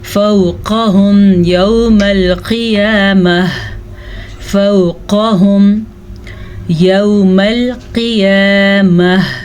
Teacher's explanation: قاف کو پر پڑھنا ہے اور یہ واو لین ہے